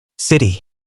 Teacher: When t comes between two vowels, Americans pronounce it like a d.